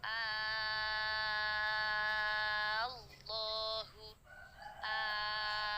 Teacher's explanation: lidah makhorijul huruf L huruf lemnya tetap di posisi huruf lam Jadi bersuaranya kalau diurai seperti bersuara lo lo yang tidak ada lidah yang menjulur keluar ya ujung lidahnya berada di gusi atas · lidahnya tetap diposisi lam jangan berubah menjadi wow